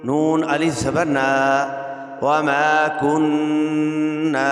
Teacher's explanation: یہاں نون مشدد ہے، ادغام ہوگا، اور یہاں ادغام واجب ہے اور آگے الف ہے، الف سے پہلے زبر ہے تو یہ الف مدہ ہے، یہاں پہ ایک الف کی مقدار کھینچنا ہے۔